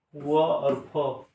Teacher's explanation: दंतोष्ठ निचले ओठ और ऊपर के दांत से